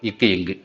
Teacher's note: அதே இக்கு இங்கு எப்படி பிறக்குதுன்னா நாவினுடைய அடி அன்னத்தின் அடியை பொருத்துவதால், நாவினுடைய அடி அன்னத்தின் அடியை பொருந்துவதால் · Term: அடி அன்னம்